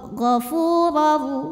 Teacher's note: Maka ra dibunyikan dengan tebal. Jadi pangkal lidah kita naikkan. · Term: tafkhim